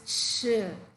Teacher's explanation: feel the friction when you say the sound it is CH a slow release of the lung air we can feel the friction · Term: CH sound